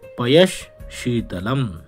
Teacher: जो श है उसका उच्चारण स्थान तालू है चु यशा नाम तालू इसलिए विसर्ग के स्थान पर तालव्य श